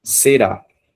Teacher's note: Oxítona, porque vejo que a sílaba forte é a última. Então, olhando aqui no jogo da velha, nós temos a última sílaba sendo acentuada.